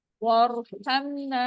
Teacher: واغفر لنا، یہاں پر را ساکن ہے، اس سے پہلے والے حرف کے نیچے زیر آ رہا ہے، را باریک ہوگی اور الف مد بھی ہو رہا ہے. وارحمنا، یہاں را موٹا ہوگا، پر ہوگا اور الف مد ہوگا